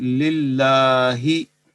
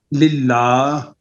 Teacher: अगर लफ्ज़ अल्लाह से पहले ज़ेर हो तो ये लाम मुरक्कक पढ़ा जाएगा।